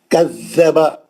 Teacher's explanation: کذب ذا کو سختی سے پڑھیں گے, زبان لگائیں گے